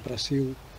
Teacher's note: it's usually the L vocalizing to some kind of ooh type thing